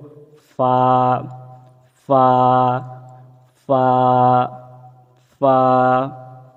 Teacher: ফা বলার সময় মুখে হালকা বাতাস, নরম বাতাস যেন বের হয়